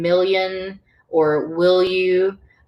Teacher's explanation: so it's that sliding into the Y sound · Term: slender